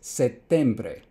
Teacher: the P uh changed to become more like the T next to it and so it became a geminate.